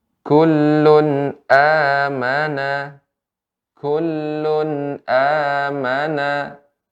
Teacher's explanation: pengucapan nun sukun atau tanwin dibaca dengan jelas tidak ada samar-samar sekali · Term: izhar